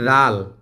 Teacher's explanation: জাল যদি আমরা বানান করে পড়ি তাহলে জাল আলিফ জবর দা, লাম দুই পেশ লুন, জালুন। তাহলে মাদের হরফের বামের হরফে থেমে যাওয়ার কারণে এখানে 3 আলিফ টান দিয়ে পড়তে হবে